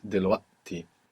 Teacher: As we saw in a word like dilwati, actually in dilwati, it's not a written hamsa, it's a written qaf that's been assimilated into hamsa. So it would be dilwaqti, but it's not this dilwati in Egyptian, to avoid having to make that qaf.